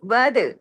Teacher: دال پہ کلکلا بھی کیجئے، کتب جد کا لیٹر ہے، کنڈیشن پوری ہو رہی ہے، کیونکہ اس کے اوپر دیکھیں جزم ہے.